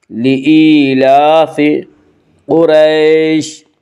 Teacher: قاف کو پر پڑھیں گے۔ قاف حروف مستعلیہ میں سے ہے